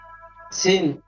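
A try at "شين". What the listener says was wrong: শিন, শিন মোটা করে।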